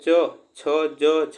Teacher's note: यहाँ पे च, छ, ज, झ, यहाँ यह तालव्य होता है